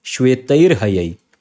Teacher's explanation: It combines as shwetair hayai. This ra comes in place of visarga · And ha again belongs to a mridu vyanjan. So instead of visarg, you will have a ra. So you will have a, then you will have a ra, and then you will have a ha.